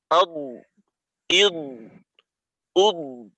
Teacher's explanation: আব বলার পর দদের মাখরাজে যে গিয়ে চাপ দেই, এই চাপটা যখন ছাড়ি তখন আমাদের আর একটা আওয়াজ হয় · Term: দদের উচ্চারণটা